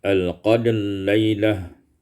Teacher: idgham ra fil lam, diidghamkan ra pada lam